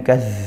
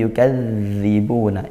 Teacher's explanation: Yukadzibu sama dal bertasydid ya ditepatkan makhraj dan sifatnya ya dialirkan suaranya tanpa desis. Bukan yukad tapi yukadzibuna.